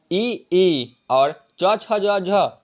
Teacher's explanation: इ ई और यस और च वर्ग यह तालू से बोले जाते हैं